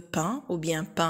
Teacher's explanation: voyelle palatale, non labiale, nasale, ouverte, c'est comme dans pain